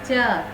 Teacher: च में जीभ तालू से टकरा रही है